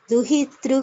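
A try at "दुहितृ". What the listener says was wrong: Duhitra, it's better if we chant it as Duhitra, not Duhitr. Duhitr, no no sanyuktakshara there. Duhitra kuchatata.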